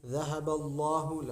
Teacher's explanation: لفظ اللہ موٹا ہوگا، ما قبل زبر ہے